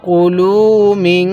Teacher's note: লামের মধ্যে টান দিবেন কাফের মধ্যে টান দিবেন না